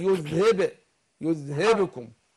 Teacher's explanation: القلقلة اللي في الباء